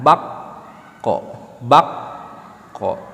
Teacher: kalau dalam qaf ini suara tertahan, bak ko. Bahkan nanti dalam huruf qaf ini ada sifat yang harus ditonjolkan, yaitu sifat isti'la, termasuk sifat aridiyahnya, yaitu tafkhim.